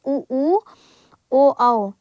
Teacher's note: संवृत स्वर जिन स्वरों के उच्चारण में ओष्ठ गोलाकार हो जाता है।